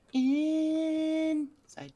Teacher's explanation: you don't stress the in it sounds bizarre you you stretch the side right inside it